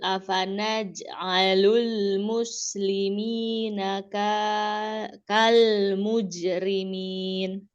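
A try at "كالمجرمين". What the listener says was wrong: Ya, kayaknya jangan dipanjangin. Mujrimin langsung.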